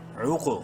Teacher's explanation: قاف کو منہ بھر کے پڑھتے ہوئے قلقلہ کرنا ہے قاف پہ، کیونکہ حروف قلقلہ میں سے ہے اور ساکن ہے.